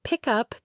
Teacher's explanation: pick up doesn't sound like pick, then up. It often sounds like pie cup, with the K sound carrying over. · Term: linking consonants to vowels